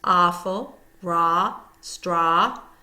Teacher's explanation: Ah is often considered a W-controlled digraph, but in some cases it is pronounced as a diphthong. The Canadian pronunciation is ah, like the sound you make when a doctor is looking in your throat, and is considered a monophthong.